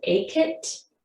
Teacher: It might come out saying a kit, dropping that N.